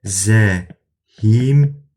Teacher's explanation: i saiti sözün h və m samitinin arasına artırılır